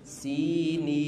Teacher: Tapi tidak boleh sinin dibesarkan, sinin harus tetap tipis.